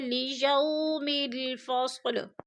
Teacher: وہ لیجو میں جو ہے وہ لین ہے، وہ ساکن سے پہلے یا کے اوپر زبر ہے تو وہ لین کو ہم نے لمبا بھی نہیں کرنا اور جھٹکا بھی نہیں دینا